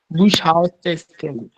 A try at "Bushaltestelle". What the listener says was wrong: And Bush. It's Bus. Hier Bus. Haltestelle.